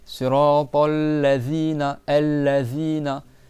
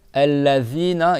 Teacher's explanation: il faut que le bout de la langue, il sorte dessous les dents. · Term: zel